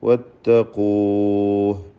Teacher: ദീർഘം മദ് ആരിദ് ലിസുക്കൂൻ എന്ന ദീർഘമാണ്. വഖഫിന് വേണ്ടി പുതുതായി വരുന്ന ദീർഘം. അത് 4 ഹറക്കത്തിൻ്റെ അളവിൽ മിതത്വം സ്വീകരിക്കാം.